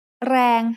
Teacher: แรง has a low-class consonant and a live ending, so it is pronounced mid-tone